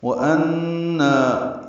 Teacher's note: ان میں نون مشدد پہ غنہ اور نا الف مدہ ہے، دو حرکات لمبا ہے · واو ہونٹوں کی نہ تمام گلائی سے